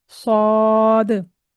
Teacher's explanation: इसको मोटा पढ़ा जाता है। और इसमें आपके जो होठ हैं, वह भी गोल नहीं होने चाहिए। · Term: हर्फ स्वाद